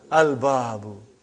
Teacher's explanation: Moon letter. You did pronounce lam.